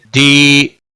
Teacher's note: دی یا مدہ ہے، ایک الف کے برابر کھینچ کر پڑھیں گے